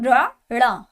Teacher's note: चलिए बात करेंगे हम इसमें आगे उत्क्षिप्त व्यंजन, जिनके उच्चारण में जीभ पहले ऊपर उठकर मूर्धा का स्पर्श करे, मतलब ऊपर हमारे जो जीभ है वो ऊपर लगे, फिर झटके के साथ नीचे आए।